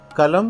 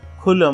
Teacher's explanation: दखनी में क का उच्चारण ख में परिवर्तित हो जाता है